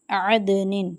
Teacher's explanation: دال پہ قلقلہ کریں گے اور پھر اخفا کی صورت میں غنہ کریں گے